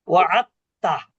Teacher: এই দালটা না পড়ে তাকে তাজদিদ দিয়ে ডাবল পড়া হচ্ছে, কারণ দাল এবং তা একই মাখরাজ কিন্তু সিফাত ভিন্ন। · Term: ইদগামে মুতাজানিসাইন